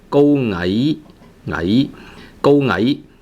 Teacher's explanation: Ngai, so it's a rising tone, second tone. So the pitch of ai is a little bit lower than the pitch of go.